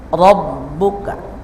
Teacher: Rabbuka, awas, ro-nya tafkhim, baca tebal.